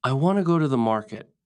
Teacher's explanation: The words want, go, market are strong. Other words are soft.